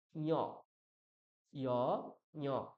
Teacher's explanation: ইয়কারের সঙ্গে আমরা নাক যোগ করে দিচ্ছি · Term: অনুনাসিক ইয়